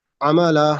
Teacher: نہیں عین پراپر ادا نہیں ہو رہی نا. عین جو ہے حلق سے آئے گا